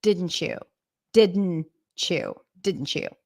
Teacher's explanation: the T actually becomes the beginning of the next part didn't chew so we have a CH sound I'm going to